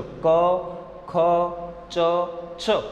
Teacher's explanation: અઘોષ ધ્વનિનું જ્યારે ઉચ્ચારણ થશે એટલે નાદતંત્રી ઓછી કંપન અનુભવશે.